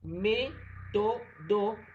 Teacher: me sería la sílaba fuerte